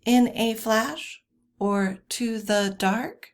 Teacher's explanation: uh we've got anapestic or uh anapest and that would be two unstressed syllables followed by a stressed syllable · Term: anapestic or anapest